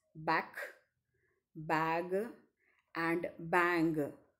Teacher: the final sounds in the English words back bag and bang are velar sounds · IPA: /ŋ/